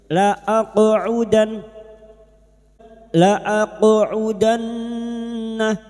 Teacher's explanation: qaf sukun yang mati asli di tengah kalimat, qalqalah sugra, jangan lupa dipantulkan